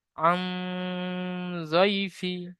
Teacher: ইয়া লিনকে নরম আওয়াজে তাড়াতাড়ি পড়তে হবে, টান দেওয়া নিষেধ